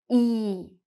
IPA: iː